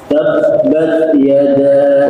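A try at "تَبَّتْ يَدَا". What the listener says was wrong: Tabbat. Ini nggak ada hamasnya. Bat. Bat. Bat.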